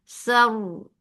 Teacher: But fatha upon jaws attached to ra. Ra will be heavy too because there is fatha before it.